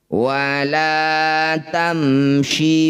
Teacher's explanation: Wala tamshi, mim sukun bertemu bukan mim, bukan juga ba, disebut bacaan namanya idhar syafawi. Bunyi mim baca dengan jelas, syafawi, bibirnya rapat, tidak usah dengung.